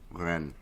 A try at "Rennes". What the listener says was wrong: That's not how you say it. roll your R's.